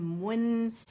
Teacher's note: میم کے لیے دونوں ہونٹوں کو پہلے ملائیں گے اور پھر دمہ اسے دیں گے